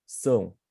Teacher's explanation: You have to put your tongue back and you must say a bit of a nasal sound.